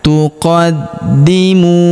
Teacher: Huruf di kita tahan dan tekan karena terdapat tanda tasydid di atasnya